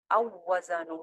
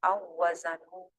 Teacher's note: پہلا والا واؤ ختم کر کے دوسرے والے واؤ کو 2 مرتبہ پڑھا گیا